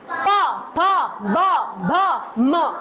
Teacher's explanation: सारी आवाजें कहां से निकल रही हैं? आपके होठों से निकल रही हैं।